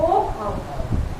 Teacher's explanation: चूंकि आ का स्थान कहाँ पे है, कंठ में है, अब उसमें एक मात्रा जुड़ी है ओ औ, तो ओठ से जुड़ी है, क्योंकि आ प्लस उ बराबर ओ। तो कंठ और ओष्ठ मिला के क्या हम बोलेंगे, कंठ ओष्ठ